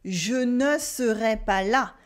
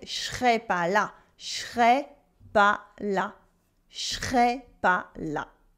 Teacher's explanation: the negation in ne pas, where it loses the ne.